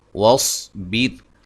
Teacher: صاد کو موٹا ادا کریں گے